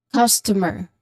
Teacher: The stressed syllable here would be on the first syllable, which is cause.